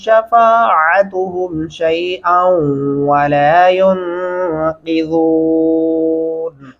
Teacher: शैअन वला युनक़िज़ून, यहाँ पे नून पे गुन्ना भी लाजमी होगा और क़ाफ को मोटा पढ़ेंगे। ज़ाल को नरमी से अदा करते हुए वाऊ के साथ मिलाना है तो आवाज़ लंबी हो जाएगी।